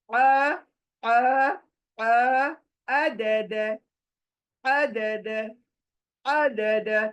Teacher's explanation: हलक के बीच से इसको बाहर आना है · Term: आइन